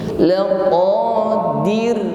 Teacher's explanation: Ditutup dengan huruf ra, maka muncul sifat takrir, ada getaran, namun getarannya di sini tarqiq, tipis, ringan. Bukan laqadiru, ya, getarannya tidak menebal, namun di sini tarqiq.